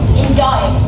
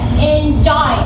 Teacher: It's made up of two syllables. The first one is soft or unstressed, and the second one is stronger or stressed. It's like saying da do da do. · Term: IM